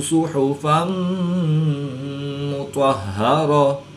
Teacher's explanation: دو پیش کی تنوین کے بعد میم حروف یرملون میں سے ہے تو یہاں پر ادغام مع الغنہ ہوگا، یعنی غنہ کر کے پڑھیں گے